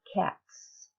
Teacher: if you have your fingers on the front of your throat you should not feel a vibration that's the S sound